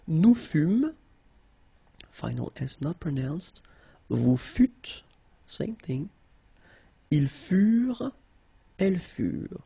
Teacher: Keep in mind that ENT, you know, the ending for the plural form is never pronounced, so furent.